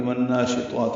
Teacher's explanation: یہ غنہ ہے، نون مشدد ہے، ادغام شمسی مع الغنہ ہے۔ شین کو جلدی اور معروف پڑھیں گے، طا پر پڑھیں گے، 2 حرکات لمبا کریں گے، اس کا کھڑا زبر بھی پر ہے یعنی الف۔